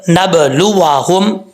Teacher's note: با حروف قلقلہ میں سے ہے، قلقلہ کیا جائے گا، با ساکن ہے